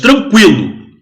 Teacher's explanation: Em tranquilo, o ditongo vai aumentando. O som do U aumenta para o som do I. Ele vai em direção ao I. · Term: ditongo crescente